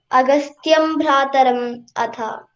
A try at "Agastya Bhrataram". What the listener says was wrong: No, Agastya Bhrataram. So the previous line was Sutikshanam cha api Agastyam. Sutikshanam cha api Agastyam cha. There it is Agastyam. But here Agastya Bhrataram Tatha.